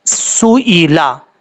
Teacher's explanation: میم الف زبر ما، کما، سین پہ سو، حمزہ زیر ای، لام زبر لا، سو ای لا. سین کو بریک پڑھیں گے اور سیٹی کے ساتھ پڑھا جائے گا کیونکہ حروف صفیریہ میں سے ہے